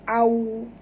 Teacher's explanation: Tak boleh dengung. Au, waw sifatnya lin, lembut, maka kita kena muncungkan mulut kita